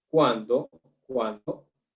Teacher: tenemos la mayor fuerza de voz en la vocal la vocal abierta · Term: diptongo